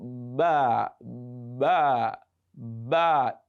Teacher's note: Ba. So the letter Ba is pronounced by the meeting of the 2 lips, that is the lower and the upper lips.